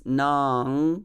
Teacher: nam, which I pronounce as nang, because there is anusvara